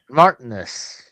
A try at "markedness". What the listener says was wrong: No, not Markness. Markedness.